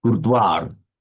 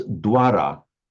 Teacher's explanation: When the V sound directly follows a S or a Sh or a stop consonant, it's pronounced virtually identical to the English W.